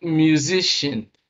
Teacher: stress is on the second syllable from the end of the word